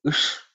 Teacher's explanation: Ush is the cerebral sh with the tongue, tip of the tongue pointing upwards.